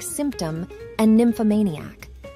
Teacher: the labio dental nasal which is made by placing your top teeth on your bottom lip and allowing air to flow out of your nose